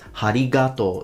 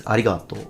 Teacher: he actually put aspiration, he added ha. He says harigato.